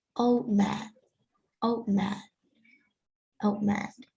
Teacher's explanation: when we say two words like old and man, the D sound would disappear.